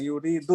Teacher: dalnya kurang lemes ya. Yuridu itu ujung lidahnya itu kurang ke arah punggung. Yuridu, jangan yuridu, terlalu ujung enggak.